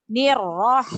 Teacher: roh-roh berharokat fathah itu awalnya menjadi tebal dibaca tebal